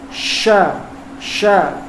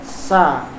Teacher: Tersebarnya suara angin antara lisan, antara lidah dan langit-langit. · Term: at-tafasyi